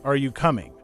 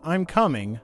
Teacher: the pitch goes up at the end but when they say I'm coming the pitch stays flat